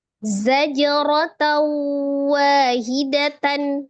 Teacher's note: Zaja di situ ada jim sukun ya, hukumnya qalqalah · Ketika diwasal tak marbutohnya bunyinya tatan